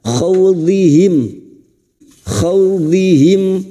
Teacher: Hum fi kasrah diikuti ya sukun 2 harakat mat tabi'i. Khawdihim, khaw fathah bertemu waw sukun kita lunakkan